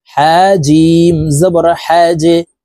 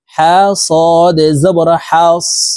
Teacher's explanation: জিম হরফ কলকলার হরফ, তাই নিচের দিকে ধাবিত করে ধাক্কা দিয়ে উচ্চারণ করতে হবে।